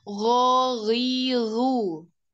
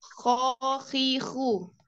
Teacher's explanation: membedakan huruf ghoin dan kho ya. Dia satu makhraj ada di tenggorokan bagian atas, tetapi gesekannya berbeda.